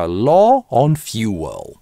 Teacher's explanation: Либо пауза, гортанная смычка law [пауза] on fuel.